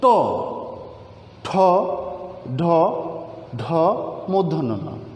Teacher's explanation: জিহ্বার অগ্রভাগ তালুর শক্ত খাঁজ কাটা একটা অংশে গিয়ে টোকা দিয়ে উচ্চারিত হয়।